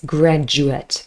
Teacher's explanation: the d u forms a j in fast speech